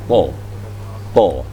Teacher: To itu penuh mulutnya. To, to, ya. Memenuhi mulut bagian belakang